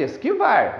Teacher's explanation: se você falar normalmente, esquivar. A sílaba forte é a última.